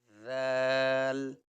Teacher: زبان باہر آئے گی، اوپر کے دانتوں پہ لگے گی نوک، اور اس کو نکالیں گے ہم ذال۔